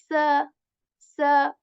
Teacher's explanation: How they are different is that seen is a bit light, s, with a whistle sound as well, s. But saw is there isn't any whistle in it, and also it is a bit heavy.